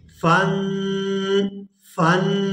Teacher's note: یہاں نون ساکن ہے اور اس سے پہلے اور اس کے بعد جو ہے نہ تو کوئی حروف حلقی میں سے کوئی حروف ہے اور نہ ہی یرملون میں سے، تو یہاں پر اخفا کریں گے اور آواز ناک کے اندر جائے گی